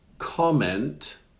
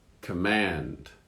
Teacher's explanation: So in the first one, the accent is at the beginning. On the second word, it's at the end.